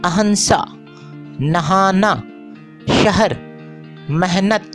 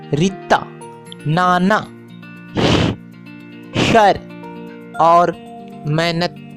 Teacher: उर्दू के अक्सर हाकारी आवाज़ों पर मुश्तमिल अल्फाज पंजाबी उर्दू में गैर हाकारी हो जाते हैं, जैसे अहंसा, नहाना, शहर, मेहनत के बजाय रित्ता, नाना, शर और मेहनत वगैरह।